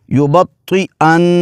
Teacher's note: ایسے نون کو جماؤ کے ساتھ ادا کریں گے، آواز کو تھوڑی دیر کے لیے ناک میں رکھیں گے